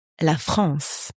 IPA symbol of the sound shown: ɑ̃